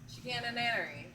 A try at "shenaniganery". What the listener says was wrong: Shenaniganery. Huh, you're just objectively switching up two of the vowels. How are you doing that?